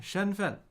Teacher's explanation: Identity first tone neutral tone shenfen